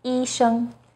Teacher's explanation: First tone, 一 声, is high and steady